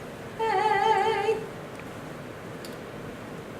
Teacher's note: Your tongue does come forward a little bit on the A. A. Eh, as in yet. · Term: long A